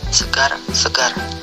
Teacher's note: Konsonan R, kriteria bunyi apikoalveolar getar bersuara